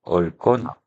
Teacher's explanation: 리을 기억은 자 우리가 기억을 발음했었는데 자 이렇게 리을 기억 다음에 뒤에 기억이 오게 되면 이럴 땐 리을 플러스 리을만 발음이 되고 예사소리 기억은 된소리 쌍기억으로 바뀌어 버렸네요